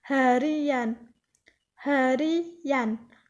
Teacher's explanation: dalam proses pengimbuhan sufiks-an pada dasar hari akan muncul bunyi Y yang dalam ortografi tidak dituliskan